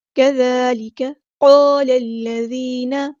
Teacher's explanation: لام کو ہم نے لام کے ساتھ ملا دینا ہے. حمزۃ الوصل ہمارا ڈراپ ہو جائے گا.